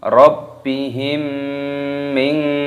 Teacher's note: mim sukun bertemu dengan huruf mim, hukumnya dibaca idgham mimi, didengungkan.